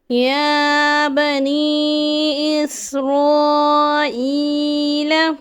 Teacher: یا بنی اسرائیل. اسرائیل پہ مد متصل ہو رہا ہے. حرف مد کے بعد ہمزہ اسی کلمے میں ہے.